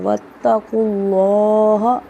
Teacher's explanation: دو دفعہ پڑھا جاتا ہے، قاف موٹا پڑھا جائے گا، اور لفظ اللہ کلام سے پہلے پیش آ رہا ہے تو لفظ اللہ کلام موٹا پڑھا جائے گا